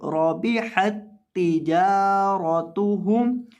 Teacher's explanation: گی دو تا نہیں ہوں گی ربحت تجارتهم اس طرح نہیں دونوں تاؤں کو الگ الگ نہیں پڑھیں گے ادغام کر کے پڑھیں گے کیونکہ یہاں تشدید آ گئی ہے دو تا اکٹھی آ گئی